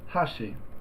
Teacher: Hashi meaning chopsticks with an accent on the first Mora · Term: pitch accent